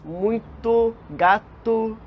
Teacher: o U curto, que soa mais como U, exatamente como O no final das nossas palavras do português. Muito, gato, esse som de U.